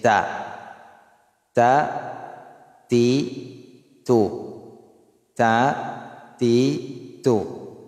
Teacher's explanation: ang kanyang makhraj ay sa harap ng dila kasama ang pinagmulan ng maxillary central incisor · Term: letra na ta